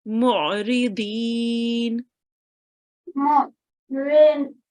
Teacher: I could hear that you read the ayn from your throat as well.